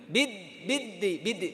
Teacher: মিদ বলার সময় জিহ্বাটা বের হয়ে গেছে বের হবে না